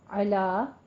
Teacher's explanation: عین وسط حلق سے ادا کریں گے اور لا کھڑی زبر ہے، فتح قائمہ ہے، 2 کاؤنٹ کریں گے.